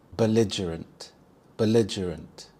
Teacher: The stress is on the second syllable lige.